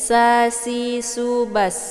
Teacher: di sini ada desis anginnya karena dia sifatnya adalah safir. Jadi kalau safir itu anginnya itu lebih jelas kalau dibandingkan dengan yang sifatnya hamas.